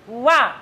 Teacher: Makhrajnya bibir kanan kiri nempel.